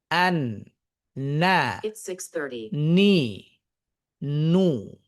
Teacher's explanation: নুনের উচ্চারণ টা অর্ধেকটা তার মুখ থেকে হবে বাকি অর্ধেকটা নাক থেকে হবে।